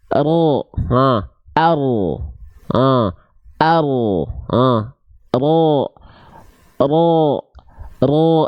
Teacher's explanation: jadi ujung lidahnya enggak betul-betul menyentuh · ada celah kan celah itu untuk mengalirnya sedikit suara sifat tawasut dari huruf ro